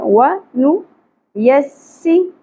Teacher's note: سین سیٹی کی اواز ائے گی